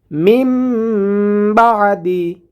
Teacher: নুন সাকিনের পরে বা এসেছে হরফ বা এসেছে অতএব নুন টাকে মিম দ্বারা পরিবর্তন করিয়া পড়বো মিম বাদি এবং এখানে গুন্না করব মিম বাদি বা কন্ঠনালীর মাঝখান